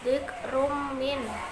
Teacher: Dzikrum min idhom bihuna, karena tanwin atau tanwin bertemu mim. Cara membacanya, tanwin dimasukkan ke mim sambil berdengung.